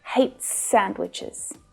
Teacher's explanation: the s at the end of hates pulls together with the s from sandwiches